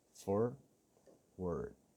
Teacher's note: Forward has two Rhotic Schwas, one at the beginning and one at the end. OR and AR. Forward.